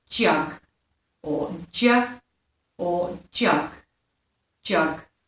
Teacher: And for its voiced pair is the j sound, so it's a d and a j